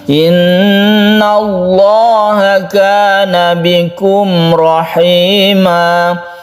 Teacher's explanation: Lafaz Allah ini disebut dengan lafdzul jalalah. Di sini ada lam jalalah yang dibaca tafkhim atau tebal karena sebelumnya ada fathah. · Iwad artinya ganti, tanwinnya diganti menjadi mad dan panjangnya satu alif. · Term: mad iwad